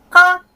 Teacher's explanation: И у меня получается первую букву, сейчас вот я скажу «ка», воздух не ударил по ладони. Вторую «ка», воздух ударил по ладони.